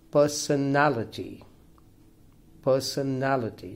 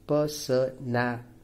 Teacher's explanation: this is a five-syllable word and the stress falls on the third syllable